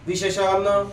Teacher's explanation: दाताला जीभ लागतच नाही विशेषणला. विशेषण असं करतो आपण नाही करत.